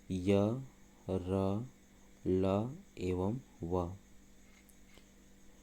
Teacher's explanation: ये चारों सघोष हैं, अर्थात जिनके उच्चारण से स्वर तंत्रियों से कंपन उत्पन्न होती है या स्वर तंत्रियों में कंपन उत्पन्न होती है। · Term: अंतस्थ व्यंजन